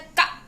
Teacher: हमारे कंठ से आवाज निकल रही है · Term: का वर्ग